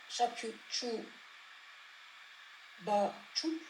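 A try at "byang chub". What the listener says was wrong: Alors, un poil plus d'expiré. Cha, shapyu, chu, ba, chup. Oui, parce que chang, chup, c'est l'éveil. Chang, chup, chang, ba expiré, chup, chang, chup, c'est pas jang, chup, comme on voit dans les phonétiques. C'est vraiment chang, chup. C'est pas jang, c'est vraiment chang, chup.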